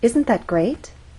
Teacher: And we're using rising intonation because this question requires a yes or no answer. By asking, "Isn't that great?" we expect our listener to agree with us and say yes.